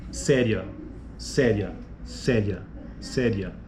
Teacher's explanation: Veja que a vogal final ali, né, ria, você tem a vogal, ocorre, né, o ditongo, e você tem a vogal no A e a semivogal no I